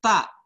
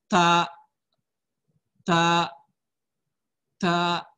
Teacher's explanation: Tempelnya ke gigi seri pangkal atas. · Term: makhraj huruf ta